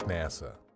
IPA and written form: ˈnæsə (NASA)